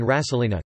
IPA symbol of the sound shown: ɕː